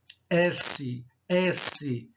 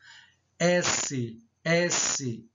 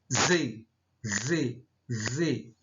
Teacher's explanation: São pronunciadas pelo contato entre a língua e os alvéolos dos dentes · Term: alveolares